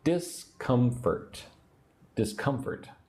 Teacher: Put the emphasis on syllable two.